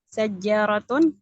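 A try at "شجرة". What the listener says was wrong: Nggak ada tasdidnya. Syajarat. Nah, jadi kada ada tasdid di jim.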